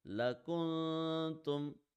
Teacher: If noon has a jazm on it, or if a letter has a double sign and the letter next to it is not from the throat letters group, then we apply ikhfa, in which we read the sound of noon in our nose, stretch it for 1 second, and make sure our tongue does not touch anywhere